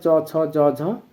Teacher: বর্ণগুলোকে বলা হয় তালব্য বর্ণ বা তালব্য ধ্বনি এটি উচ্চারণের সময় চ ছ জ ঝ এগুলো উচ্চারণের সময় আমাদের কোমল তালুর সাথে জিহ্বার স্পর্শ · চ, ছ, জ, ঝ এগুলো উচ্চারণের সময় আমাদের কোমল তালুর সাথে জিহ্বার স্পর্শ হয়, এই জন্য এগুলোকে বলা হয় তালব্য ধ্বনি।